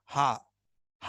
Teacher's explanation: हा जब आपने बोला तो यहाँ पर कंठ या गले का प्रयोग आपने किया